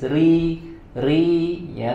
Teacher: Ri dibaca dengan tipis ya, tidak dibaca dengan tebal.